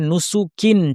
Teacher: যেমন এই প্রথম শব্দটা দেখুন কানা আরবিতে এটাকে একটু জোর দিয়ে বলতে হবে কানামা কানা তেমনি যখন আমরা সুকুন দিয়ে থামবো বিশেষভাবে কাফে কাফ সুকুন যখন আমরা উচ্চারণ করব তখন এর বাতাসটাকে স্পষ্ট করতে হবে